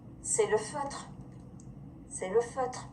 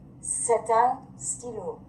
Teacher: When say is followed by a consonant, say sounds like say, S-A-Y. When it's followed by a vowel, it sounds like set.